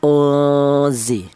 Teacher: apabila nun mati berjumpaan dengan huruf za, maka cara bacanya disamarkan karena dibaca ikfa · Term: ikfa ausat